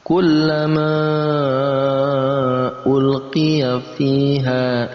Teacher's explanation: Ada mad tabi'i bertemu di lain kata, maka ini masuk dalam kategori mad jaiz munfasil. Tadinya mad tabi'i biasa dibaca 2 harokat, panjangnya 2, ketukan, tapi karena bertemu dengan hamzah di beda kalimat, ini harus dibaca 4 sampai 5 harokat, 4 sampai 5 ketukan.